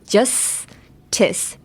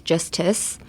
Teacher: I guess you have to be very breathy when you say this. Like so much air is coming out of your mouth. In the j and the s. Justice. The placement of your tongue is basically in the same place.